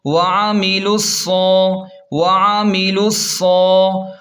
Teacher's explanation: صاد پر کھڑا زبر ہے تو ایک الف کے برابر کھینچیں اور موٹا پڑھیں